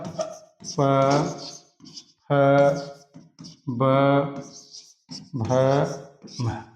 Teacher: प वर्ग ये ओष्ठ से उच्चारण होता है इनका।